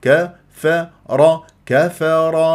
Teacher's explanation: ارقق الراء لمجاورته للكاف والفاء المرقق